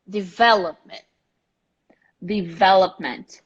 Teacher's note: The stressed syllable is the VE.